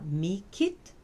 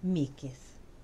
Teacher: La consonne T devient une spirante voisée